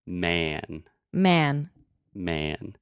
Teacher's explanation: So actually, what I'm doing, I'm saying ma, like a cat. But when I am closing my mouth with the N, the quality of the sound changes and it automatically makes more of a eh sound